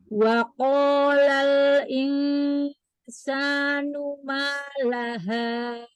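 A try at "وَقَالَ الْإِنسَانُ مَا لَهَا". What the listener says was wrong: ma, jangan ma ngangkat. Wa qalal insanu ma laha.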